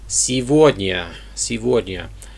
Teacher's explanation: For some reason, the G is pronounced as a V.